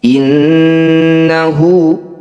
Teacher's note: Nun bertasdid disebut bacaan gunah musyadadah bunyi Nun dengungkan dua harakat